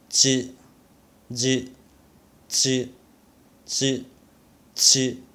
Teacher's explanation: the difference is that I think your tongue is dentalized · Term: alveolar affricates